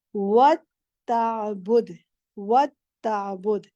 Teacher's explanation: वताबुदु नहीं है, ता पे तशदीद है